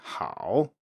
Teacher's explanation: there is a dipping variant that is used when the tone is heavily emphasized or when it's in isolation, such as when saying hao, but that this is rather unusual in natural speech.